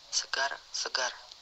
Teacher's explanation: Konsonan R, kriteria bunyi apikoalveolar getar bersuara